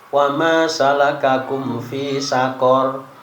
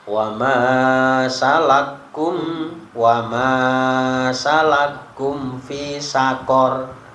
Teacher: Jadi kafnya diidghamkan pada kaf berikutnya.